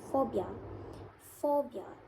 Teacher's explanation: be seen when we pronounce phobia phobia it's like we are forcing air through to a narrow constriction form by bringing uh the bottom lip against the Upper Front Teeth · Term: fricatives